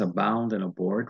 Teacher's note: the two words abound and abort repeat the initial a sound the mid-central vowel don't worry about that so these words show assonance as well